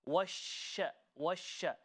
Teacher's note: What that means is with the letter sheen, it has a quality which is exclusively for that letter, which is known as tafashi. So tafashi means to spread. Okay, the sound needs to spread across.